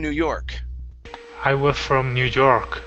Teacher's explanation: we don't want to stress new we want to stress york